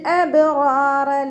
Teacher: റോ ഫതഹ് വന്നു ഉയർത്തി ഉച്ചരിച്ച് കൊടുക്കുക. റോയിൻ്റെ കൂടെ അലിഫ് മദ്ദും വന്നിട്ടുണ്ട്, 2 കൗണ്ട് നീട്ടിക്കൊടുക്കുക. അടുത്ത റോയിനെയും നമ്മൾ ഉയർത്തി ഉച്ചരിച്ച് കൊടുക്കുക കേട്ടോ.